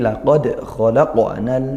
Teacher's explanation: laqad khalaqa ini qalqalah sughra keduanya